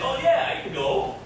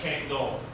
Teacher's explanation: Can't. Stress the negative word can't. So when you say can't, it's usually stressed.